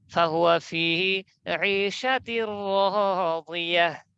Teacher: তো এখানে র এসেছে ইদগামে বেলা গুন্না, তাহলে ইদগাম মিলিয়ে পড়বো, তবে বেলা গুন্না, গুন্না ছাড়া। তাহলে মিলিয়ে পড়ি, তাসদিদ দিতে হবে, তাসদিদ দিয়ে দিলাম।